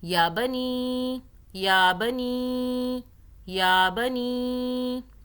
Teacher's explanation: یا کو 1 الف کے برابر کھینچا، نی کو 3 الف کے برابر، چھوٹی مد آ رہی ہے۔